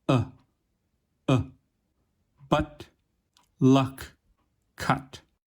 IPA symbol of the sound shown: ʌ